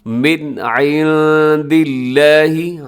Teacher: یہاں پر من میں اظہار حلقی ہوگا، یعنی کہ آپ نے غنہ نہیں کرنا، تیزی سے پڑھ دینا ہے۔